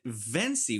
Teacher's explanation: she pronounced it Vency with a v sound instead of a w sound